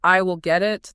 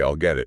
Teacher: pronounce will naturally as ill when you speak fast